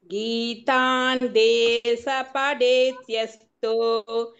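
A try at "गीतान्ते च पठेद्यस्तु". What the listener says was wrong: சான்னு சொல்லணும். சொல்றேன், சான்னு சொல்லுங்க அந்த இடம்.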